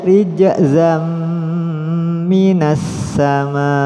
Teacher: Jim termasuk huruf Qalqalah jadi dipantulkan